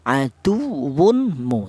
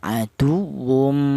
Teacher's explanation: Seperti contoh aduwu mu tidak boleh. Yang benar tanwin ini langsung diidghamkan dimasukkan ke huruf mim.